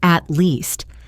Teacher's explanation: At least sounds like at least with the t link into the L.